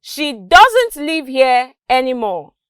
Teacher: there was a rise in my pitch when i said doesn't and it was a fall when i got to any more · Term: intonation